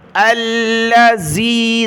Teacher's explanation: الذی، زا نہیں پڑھنا، ذال زبان نکال کر نرمی کے ساتھ ادا کرنا ہے